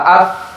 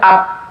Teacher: Begitu juga dengan huruf fa, af, mengalirnya. Tidak boleh ap. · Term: rikhwah